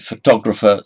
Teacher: photographer stresses on the second syllable